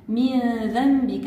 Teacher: من ذنبك عندنا إخفاء بغنة مستفيلة لأنه بعد حرف النون كين حرف الذال معجم حرف مستفيل.